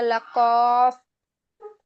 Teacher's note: 4 নম্বর মাখরাজ জিহ্বার গোড়া তার বরাবর উপরে তালুর সঙ্গে লাগাইয়া